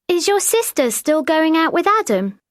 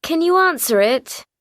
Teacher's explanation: did you notice that we don't really say is or are very loudly? Mm. Because they're not the main verbs.